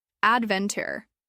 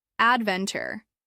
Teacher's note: The stress is usually on the second syllable.